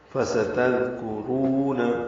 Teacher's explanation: کاف باریک ہے، را پر ہے. فستذکرون، رو و مدہ ہے، 2 حرکات لمبا ہے